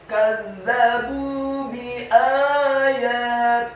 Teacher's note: Kata kadzabu, huruf kafnya dibaca tipis, fathah 1 harokat. Huruf za-nya dibaca tipis, tarqiq. Lidahnya agak keluar sedikit, ditasydidkan, fathah 1 harokat. Kemudian huruf ba-nya dibaca tipis, dhammah 2 harokat karena setelahnya ada wawu sukun.